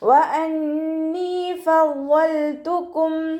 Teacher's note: വാവ് ഉച്ചരിക്കുമ്പോൾ ചുണ്ടുകളൊന്ന് വട്ടത്തിൽ പിടിച്ചു കൊടുക്കുക.